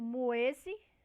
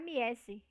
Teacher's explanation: Então vai mudar a qualidade do som vocálico, né? De semivogal U vai passar a vogal I